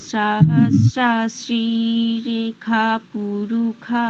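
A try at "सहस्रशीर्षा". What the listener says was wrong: রেখা পুরুষাহ নয়, রেখা আকারটাকে টানতে হবে।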